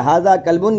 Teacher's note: تو دوستو, زبان کی جڑ سخت تالو سے لگ کر, سمجھے, ہارٹ پلیٹ سے لگ کر, root of tongue touches ہارٹ plate. ٹھیک ہے, جب زبان کی جڑ ہمارے سخت تالو سے لگے گی تو کاف نکلتا ہے